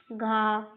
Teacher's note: घा महाप्राण प्रकार का व्यंजन है। इसमें अधिक वायु निकलती है। महाप्राण में अधिक वायु निकलती है, जो घा महाप्राण व्यंजन है।